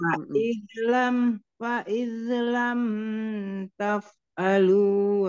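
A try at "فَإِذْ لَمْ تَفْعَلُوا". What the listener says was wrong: Oke, Bunda, di kata lam, mim sukun jangan ditahan lama-lama. Izah safawi, ya, dialirkan saja. Fa'idlam taf'alu.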